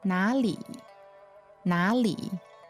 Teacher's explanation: so that's third tone neutral tone